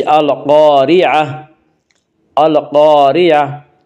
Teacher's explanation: القاریعۃ، القاریعۃ آگے آیت ہے وقف کریں گے، گول تا وقف کی صورت میں ہائے ساکنہ بن جاتی ہے